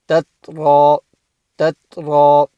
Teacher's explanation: ta is not a qalqala letter, so you don't want to bounce that